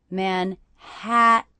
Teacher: the stressed syllable of Manhattan is the middle syllable